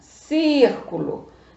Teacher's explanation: sílaba tônica é a antepenúltima sílaba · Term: proparoxítona